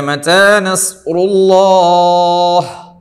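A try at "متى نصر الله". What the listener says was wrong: നിർത്തുമ്പോൾ അല്ലാഹുവിലെ ഹ വേണം.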